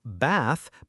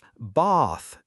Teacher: In words like bath or dance, Americans tend to use a shorter ah sound, while many Brits use a longer ah sound. So bath becomes bath in some British accents. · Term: the A sound